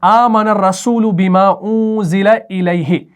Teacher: اس الیہ کو ہم کھینچ کر نہیں پڑھ رہے، ہم پڑھ رہے ہیں الیہ سنگل